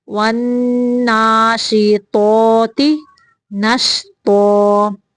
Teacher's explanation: تو موٹا ہے اور تا باریک